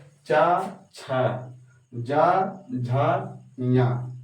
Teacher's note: पहला तीसरा और पांचवा क्या होता है अल्पप्राण होता है तथा दूसरा और चौथा क्या होता है महाप्राण होता है